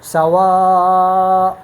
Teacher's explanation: یہ حمزہ جو ہے نا یہ حرف حلقی ہے اور یہ یہاں سے ادا ہوتا ہے، یہاں سے، اور اس · ایک تو اس میں جھٹکا ہے. دوسری بات یہ ہے کہ حمزہ میں صفت جہر ہے اور صفت شدت ہے · کہ حمزہ میں صفت جہر ہے اور صفت شدت ہے، تو صفت جہر اور شدت کی وجہ سے یہ حمزہ بہت مضبوطی کے ساتھ اور قوت کے ساتھ اپنے مخرج سے ادا ہوتا ہے